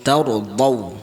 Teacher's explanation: ta tu nipis istifal. Ra tu dia tebal tafkhim. Jadi kita taur cara dia kita munculkan mulut sikit.